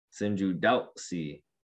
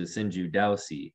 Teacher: you gotta have that glottal stop right at the w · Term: glottal w